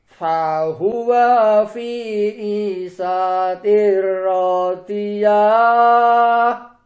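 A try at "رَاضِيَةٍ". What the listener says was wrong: Rodiahnya jangan dipanjangin Pak. Rodiah. Nah pendek. Rodiah. Jangan dipanjangin.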